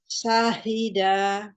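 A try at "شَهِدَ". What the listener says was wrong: Pakai shin. Syahida.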